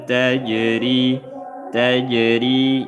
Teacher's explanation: jim sukun qalqalah qalqalah sugra · Tajri dibaca nipis karena berharakat kasrah